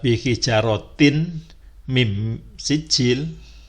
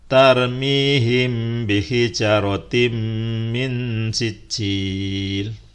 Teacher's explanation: Berikutnya contoh yang huruf mim yang kita beri tanda panah itu bukan dibaca bihijarotin mim sijil, tetapi dibaca tarmihim bihijarotim min sijil. Jadi langsung dibaca, kasroh t-nya hilang, jadi bihijarotim min sijil ya.